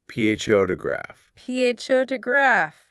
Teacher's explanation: It's right on the first part. pho is loud and long. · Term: stress